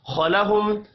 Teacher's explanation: میم ساکن کے بعد واو ہے، اظہار شفوی ہوگا، غنہ نہیں ہوگا۔